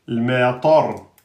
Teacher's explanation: C'est bisababil ma et ensuite tar. Le ta est emphatique et le ra est emphatique. Le matar. Donc là, on emphatise le ta et on emphatise le ra.